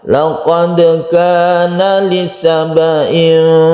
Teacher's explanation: Laqad kana membacanya biasa saja. Laqad kana mengalir, kita pantulkan dalnya. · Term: qalqalah sughra